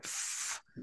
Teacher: here we are not stopping but we are trying to narrow down the passage for the sound to be emitted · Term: fricatives